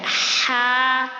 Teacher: آگے ہا پر کھڑا زبر ہے تو اس کو کیسے پڑھیں گے؟ 2 کاؤنٹس کھینچ کر